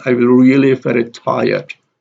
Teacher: Here the stress is on really and tired.